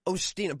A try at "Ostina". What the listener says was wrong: Well, it's actually, it's pronounced Asta like pasta. Asta, yes, Asta like pasta.